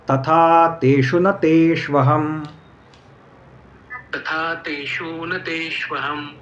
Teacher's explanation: तेषु दीर्घ करू नका. बऱ्याच जणांचा हा दीर्घ होतो उच्चार. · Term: ह्रस्व